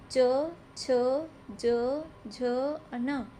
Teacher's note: अब जब आप इसको बोल कर देखोगे तो जीभ तालू से टकराती है। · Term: तालव्य वर्ण